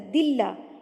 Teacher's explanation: اللہ سے پہلے جب زیر آتی ہے تو اللہ باریک پڑھا جاتا ہے